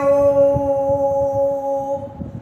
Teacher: आपका प्लुत कहलाएगा। जैसे हम ओम बोलते हैं तो ओ को देर तक खींचते हैं